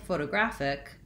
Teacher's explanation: In photographic, we do have secondary stress on my first syllable, pho, so I use my clear O. So photo, again another O, graphic.